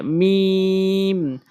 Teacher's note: মিম, টেনে পড়ব। মিম, দুই ঠোঁটের শুকনো অংশ মিলিয়ে।